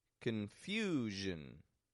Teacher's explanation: 3-syllable word, the stress is in the second syllable. The vowel gets stretched out in there a little bit longer, and then the zhin, quick and quiet.